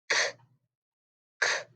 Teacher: I'm moving the back of my tongue back a little bit. K, k. But I'm trying to keep my tongue tip or the front of my tongue down at my teeth. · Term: back scraper sound